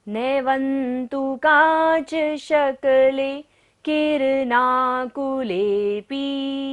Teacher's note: व के ऊपर बिंदी है और बाद में क्या है? त वर्ग, तो बिंदी का उच्चारण क्या हो रहा है? न।